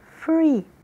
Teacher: nós utilizamos os dentes superiores e o lábio inferior